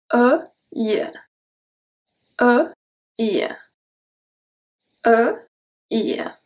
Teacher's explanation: for your lips, it's going to go from rounded to slightly stretched horizontally · The middle of your tongue is going to touch the palate, this is how we get the rolling E. The air goes through the mouth, this is not a nasal sound.